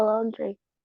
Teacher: bacanya bukan laundry a u bunyinya O